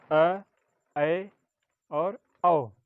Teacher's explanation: इसमें मुख का भाग आधा खुला रहता है, पूरा नहीं खुलता है, इसीलिए इसे अर्धविवृत स्वर या आधा खुला अर्धखुला स्वर कहते हैं।